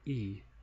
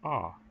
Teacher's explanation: open so that holds true if you make the sound e your mouth isn't as open as when you pronounce the sound a